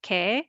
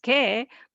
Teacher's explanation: Note that 애 and 에 is not practical to distinguish in reality. So it's considered the same sound